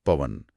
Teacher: इसमें जब वृद्धि संधि वाले मजबूत स्वर यानी ए आई ओ औ के बाद कोई दूसरा स्वर आता है तो वे टूट कर दो ध्वनियों में बिखर जाते हैं। जैसे पो प्लस अन में ओ के बाद अ आया तो ओ की ध्वनि अव में बदल गई। अव हां तो प में अव जुड़ा और शब्द बना पवन। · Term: अयादि संधि